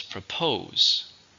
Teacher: two syllables stresses on the second